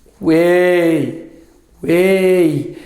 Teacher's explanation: Esse sobe no e, o u e o i são bem fraquinhos. Então eu tenho semivogal, ó, vogal e semivogal.